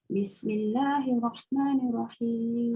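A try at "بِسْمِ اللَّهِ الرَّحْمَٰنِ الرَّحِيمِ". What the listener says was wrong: Jangan cepat sangat hirah. Bismillahirrahmanirrahim sebab ada sabdu.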